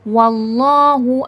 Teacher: اللہ جلالہ سے پہلے دیکھیں یہاں پر زبر ہے، موٹا کر کے پڑھا جائے گا۔ واللہ، اور کھڑی زبر بھی ہے، تھوڑا کھینچ کر۔